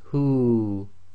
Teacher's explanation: if you have the word huwa and you're stopping, the waw goes sakin, and effectively this turns into the long vowel dhamma waw. So it would be read as hu, too long.